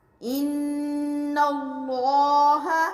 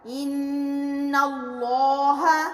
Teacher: حرف لام سے پچھلے حرف پر زبر ہے تو لام موٹا پڑا جائے گا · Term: موٹے لام